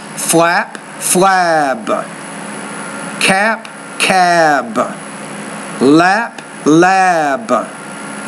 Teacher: the vowel is longer when it precedes the B because it's a voice consonant.